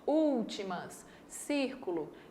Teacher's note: A antepenúltima sílaba é a mais forte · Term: proparoxítonas